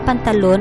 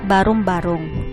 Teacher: dahil ang pantalon ay mabilis samantalang ang barong-barong ay malumay